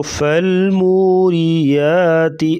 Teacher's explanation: ملانے کے بغیر پڑھیں گے تو فالموریات، را کے نیچے زیر ہے، را کو باریک پڑھیں گے